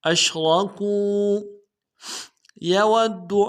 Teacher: یود میں واو کو دال کے ساتھ ملانا ہے, دال کے اوپر تشدید زور دیں گے